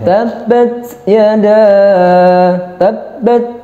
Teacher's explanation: Kalau hamas itu setelah ditahan keluar anginnya.